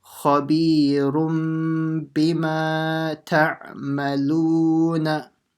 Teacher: making sure you do the light nasal sound when the tanween turns into a mim, and also a stretch in the madd asli over here, and another madd asli over here.